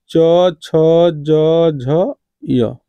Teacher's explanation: च वर्ग का उच्चारण किससे होता है? तालु से।